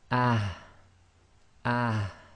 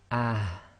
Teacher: you have to try and bring the ha from the bottom of your throat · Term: soft ha